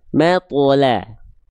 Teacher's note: Ma atto la. Ma-nya tipis, ma, to-nya tebal pantulnya mato. La-nya tipis, la.